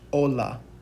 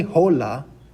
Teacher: whenever we say the letter H in a Spanish word, what ends up happening is that H is completely silent.